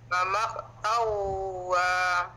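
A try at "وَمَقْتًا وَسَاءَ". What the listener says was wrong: Okey, wa maqtawwa sa. Taw nah bukan tan. Taw. Wa pendek, wa satu harakat. Wa maqtawwa sa. Taw nah apa? Taw. Tawwa bukan tan nah. Tan bukan nah. Tawwa.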